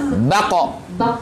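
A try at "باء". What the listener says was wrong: ya jangan bako kepanjangan sudah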